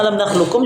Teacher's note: Untuk bacaan ayat alam dan khlukkum ini dibaca dengan idgham kamil. Artinya semua sifat qof diidgamkan ke huruf kaf tanpa tersisa